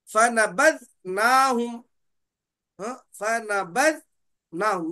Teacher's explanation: वहां पर नून का हम इजहार ही करेंगे। वहां पर हम कल्ब यानी इकलाब नहीं करेंगे, वहां पर गुन्ना नहीं करेंगे।